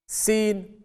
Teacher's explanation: tip of the tongue when it touches the plates of the upper and lower central incisors and its corners, leaving a slight gap in between the teeth. Sin, tip of the tongue when it touches the plates of the upper and lower central incisors and its corners, leaving a slight gap in between the teeth.